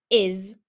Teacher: the tricky sound in this word is the s. It makes a z sound